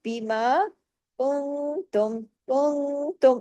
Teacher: اخفا حقیقی غنہ کاملہ، آواز گئی نا ناک میں تھوڑی باہر رہی